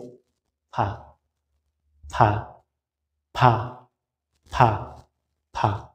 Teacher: নিচের ঠোঁটের পেট সামনের উপরের দুই দাঁতের আগার সাথে লাগিয়ে ফা। একেবারে সহজ, মানে নিচের যে ঠোঁটটা আছে এটার পেট, পেট মানে মাঝখান, এইটা সামনের উপরের দুই দাঁতের, উপরের দুই দাঁতের এই আগায়, এই আগার সাথে লাগাইয়া ফা ফা ফা ফা ফা।